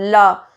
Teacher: पार्श्विक व्यंजन कौन से होते हैं, पार्श्विक व्यंजन का आपको ध्यान रखना है, जिस व्यंजन का उच्चारण करते समय वायु दो उच्चारण स्थानों की बगल से निकल जाती है, जैसे उनको पार्श्विक व्यंजन कहते हैं। ल का उच्चारण करते समय वायु जीभ और तालु का स्पर्श करके इनके पास से निकल जाती है। · आप ल बोलो, ल, तो आपका जो जुबान है, आपकी जो टंग है वो आपके ऊपर तालु से टकराएगी और हवा के थ्रू ल की आवाज़ जो है वो बाहर निकलेगी